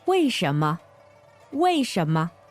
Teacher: W-E-I fourth tone, S-H-E-N second tone, M-E neutral tone.